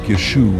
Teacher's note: Ancient speakers would have constricted their upper throat to produce what linguists call a pharyngeal consonant. The name would have sounded more like Yeshu with a sharp cutoff, rather than the flowing Yeshua we're familiar with.